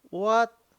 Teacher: What is second tone? Your voice from low part to the high part.